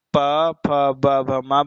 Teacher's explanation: जो ओष्ठ है दोनों आपस में स्पर्श कर रहे हैं, चिपक जा रहे हैं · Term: ओष्ठ वर्ण